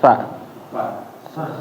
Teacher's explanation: sa itu kayak ngegigit lidah, ujung lidah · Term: ngegigit ujung lidah